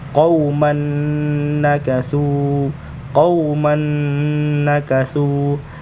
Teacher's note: memasukkan huruf yang pertama ke dalam huruf yang kedua dengan mendengung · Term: Idgham Bighunnah